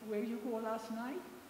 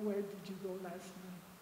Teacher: Realmente no sube como en inglés o español.